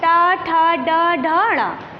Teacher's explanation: ये मूर्धा तालू के जीभ थोड़ा सा मुड़कर हमारे तालू के पिछले हिस्से को स्पर्श करती है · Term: मूर्धन्य